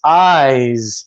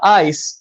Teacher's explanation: same shape of mouth, same mechanical, physical feeling, but with and without vibration